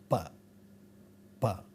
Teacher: in many other languages as well is called bilabial sound because we can't possibly say a sound like P without the help of both the lips coming together